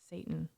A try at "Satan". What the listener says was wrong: Satan. It's like a hard T. Satan.